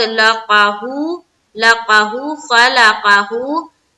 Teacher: यहाँ पर हु को एक अलिफ की मकदार के बाकदर खींचेंगे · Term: उल्टा पेश